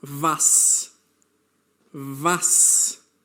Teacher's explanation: Note that the letter W in German has a V sound.